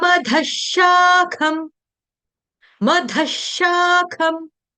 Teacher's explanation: विसर्ग का उच्चारण जो होगा हलंत श के साथ होगा, श शरबत वाले के साथ होगा।